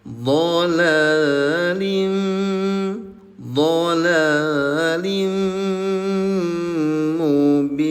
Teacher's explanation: leburkan dulu bunyi tanwinnya ke huruf mim disertai dengung selama dua harakat ditahan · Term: idgham bigunah